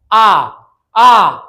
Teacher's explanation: इसके उच्चारण में मुख सबसे अधिक खुलता है। आ पूरा खुल गया। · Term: विवृत स्वर